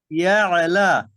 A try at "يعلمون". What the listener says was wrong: আপনার আইন কলকলা হয়ে যায়, এরকম হয়ে যায়। ইয়ালা ইয়া, হ্যাঁ হ্যাঁ, এটা খেয়াল করবেন একটু, হ্যাঁ।